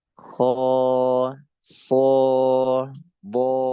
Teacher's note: huruf istilla misalnya Kho SH do Ya itu namanya tebal ya alifnya jadi tebal ya beda dengan sa Za Sya misalnya alifnya enggak tebal